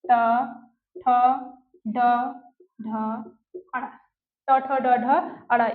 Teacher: ट ठ ड ढ ण ट ठ ड ढ ण इस किससे बोले जाएंगे मूर्धा से